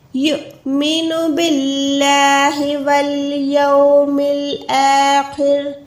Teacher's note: خو موٹا ہے، رو باریک ہے